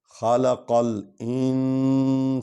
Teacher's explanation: خلق قاف کو لام کے ساتھ ملانا ہے کیونکہ اس پر جزم ہے